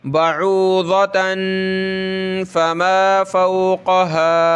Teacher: कि इस तनवीन पे हमने नाक में आवाज़ पैदा करनी है। बऊज़तन फमा फ़ौक़हा, इस मीम पे जो है तशदीद है, ये नाक में आवाज़ पैदा करनी है और मीम आगे लाम के साथ मिलेगी।